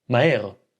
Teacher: most people subconsciously skip the H sound and just pronounce two vowels right next to each other.